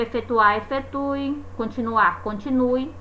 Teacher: A palavra ela pode ser confundida na hora da escrita, a gente pode se confundir na hora de escrever, justamente porque muitas vezes pronunciamos o E final de uma palavra com um som de I